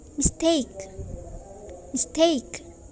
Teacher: Bisa dibedakan antara miss dengan take. Jadi yang lebih jelas itu adalah take. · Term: primary stress